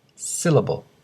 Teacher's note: the word syllable has 3 syllables, do-do-do, and the stress syllable is the first